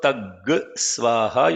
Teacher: the Anuswara becomes G because Anuswaram followed by Sa has to be pronounced as G